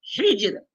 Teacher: حجر تو جیم میں قلقلہ کر لیں گے، اور آخر میں جو را ساکن ہے اس کو واضح بھی کر لیں گے، اور ساتھ ساتھ را کو باریک پڑھیں گے